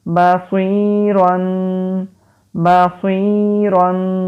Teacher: را کے اوپر دو زبر یعنی کہ تنوین اور را کو موٹا بھی پڑھیں گے